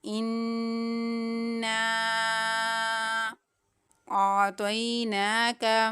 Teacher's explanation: حمزہ کو عین کے ساتھ ملاتے ہوئے عین کی ادائیگی کریں گے، عین کو حلق کے درمیان والے حصے سے ادا کریں گے۔ · یہاں پر حمزہ کے اوپر مد ہے کیونکہ آگے جو دوسرے کلمے کا پہلا لیٹر ہے وہ حمزہ ہے، تو یہاں پر مد منفصل ہو رہی ہے۔ 4 یا پھر 5 حرکات کی مقدار کھینچتے ہوئے اس مد کی ادائیگی کریں گے